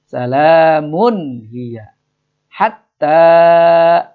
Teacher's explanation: Salamun tanwin bertemu ha itu baca izhar, jadi jelas bacanya ya.